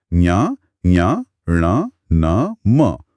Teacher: और हर वर्ग का जो पांचवा अक्षर है ञ, ञ, ण, न, म उसे पंचमाक्षर या नासिक्य कहते हैं। नासिक्य इसलिए क्योंकि हवा नाक से भी निकलती है।